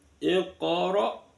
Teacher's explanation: qaf sukun terletak di tengah kalimat qalqala sughra. Iqra waw ro-nya berharakat fathah dibaca ro tafkhim.